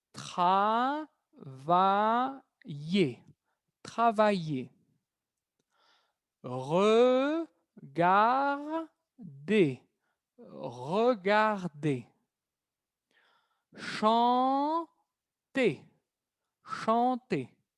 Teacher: tienen que saber que este sonido de la ER es E. E. No pronuncian la R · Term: sonido E